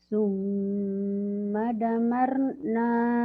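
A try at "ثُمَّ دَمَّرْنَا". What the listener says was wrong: Salah. Salahnya di sini ya. Salahnya kamu bacanya di damnya nggak nyamber. Bukan kurang nyamber, tadi tidak nyamber. Summa dammar.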